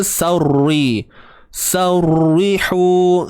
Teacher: Terangkat pangkal lidah tu. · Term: tebal